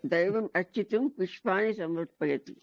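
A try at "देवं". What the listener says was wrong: దేవం అనండి, దైవం వద్దు. దేవం అని చెప్పండి, దైవం కాదు.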